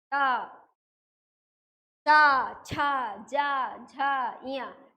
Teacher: जीहवा ऊपर उठती है और ये तालु को सेंटर में टच करती